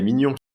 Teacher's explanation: Mignon ends with a nasal sound, while mignonne ends differently